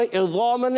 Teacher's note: حرف مدہ بھی ہے، ایک الف کھینچ کر ادا کریں گے